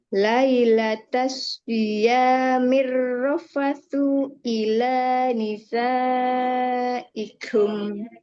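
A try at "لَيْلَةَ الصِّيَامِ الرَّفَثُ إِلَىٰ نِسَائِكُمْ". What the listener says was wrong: Nah, so-nya nggak boleh panjang. Lailatas siyamir rafasu ila nisaikum. Huruf huruf sa-nya. Huruf sa.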